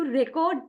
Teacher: stress on second syllable